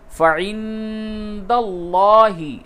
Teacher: نون ساکن کے بعد دال ہے، اس جگہ پہ اخفا کیجئے